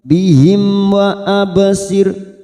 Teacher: mim sukun bertemu wau Idhar syafawi kita baca jelas tanpa mendengung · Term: idhar safawi